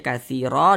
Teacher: Sehingganya katsiron diganti tanwinnya menjadi fathah, dibaca katsiro, dipanjangkan 2 harokat. Itu namanya mad iwad.